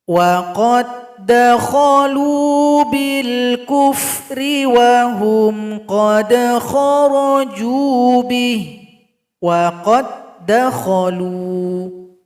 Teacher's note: Berikutnya huruf dal sukun berjumpa dengan huruf dal. Di sini tidak boleh qalqalah karena huruf dal sukun telah gabung kepada huruf dal yang berikutnya.